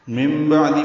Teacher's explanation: نون ساکن کے بعد با آنے کی وجہ سے نون کی جگہ میم پڑیں گے، اس کو اقلاب یا ابدال کہتے ہیں